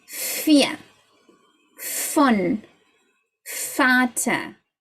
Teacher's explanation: The V in German is pronounced like an F.